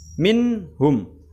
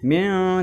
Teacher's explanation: dibaca dengan jelas nun sukunnya, minhum. Jadi nggak boleh dengung, min tidak boleh, tapi minhum. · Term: idhar halki